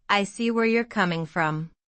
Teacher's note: Notice the intonation rises slightly on coming and then falls.